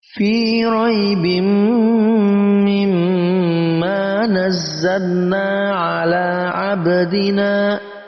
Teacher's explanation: Fi raibim mimma nazzalna ala abdina, ada ba berharakat sukun, kita baca qalqalah.